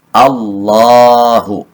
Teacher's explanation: lafaz Allah yang dibaca tafkhim jadi diawali harokat fathah dibaca tafkhim atau tebal · ha. Lafzul jalalah ini adalah ha besar dan dibaca pendek, baik dia berharokat domah, berharokat kasroh atau fathah. Sehingga dibaca tebal Allahu.